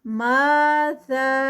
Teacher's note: ज़ा के साथ मद्दे मुनफसिल है क्योंकि उसके बाद हमज़ा है तो ये भी 4 काउंट्स